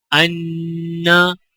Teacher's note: غنہ یعنی ناک میں آواز جاری کریں